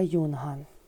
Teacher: Буковка «ю» на початку слова позначає два звуки «й», «у».